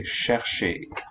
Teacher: In French, the fricative is assimilated.